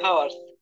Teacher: হ্যাঁ, এই এইচ এর উচ্চারণ এখানে হ না হয়ে আ হবে। হ্যাঁ, অ না হয়ে, মানে হ না হয়ে অ হবে।